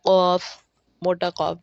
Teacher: ٹھیک ہے، قاف اور کاف۔ ٹھیک ہے، زبان کی جڑ جب کوے کو قریب سے نرم تالو سے لگے تو قاف ادا ہوتا ہے